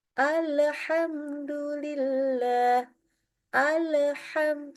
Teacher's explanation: membaca lam bersukun tapi kayak ada pantulannya atau Istilahnya tawalud